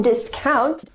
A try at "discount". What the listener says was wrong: The correct pronunciation is not discount, but discount, with the stress on the first syllable.